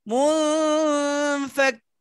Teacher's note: نون ساكنه পরে ফা ইখফা গুন্না হবে